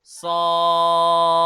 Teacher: the round Ta will turn into Ha when we are stopping